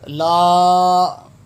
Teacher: اس کو 5 گنوں کی مقدار کھینچیں گے، یعنی 5 سیکنڈ ہم اس کو کھینچ کے پڑھیں گے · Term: مد